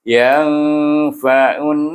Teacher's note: Maka kita gabungkan dia, jadi idghamkan dia, bunyinya yang fa'un. Nampak saya dengungkan lama bunyinya sebab nun bertasydid. Iaitu kita kena guna hukum wajibul gunnah dengan 2 harakah.